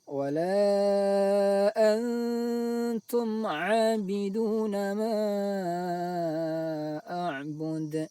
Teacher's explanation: Cara membacanya, suara nun sukun dibaca samar antara izhar dan idgham. Tidak dibaca izhar an, juga tidak dibaca idgham dimasukkan langsung ke huruf ta. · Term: ikhfa